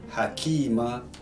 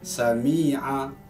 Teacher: Hanya dibaca panjangnya sebanyak dan sekadar 2 harakat sahaja ketika waqaf. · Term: mat iwaq